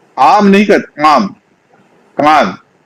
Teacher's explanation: आम है जब बोलते हैं तो आ जो है वह भी नकने लगता है आम नहीं आम कान अपने आप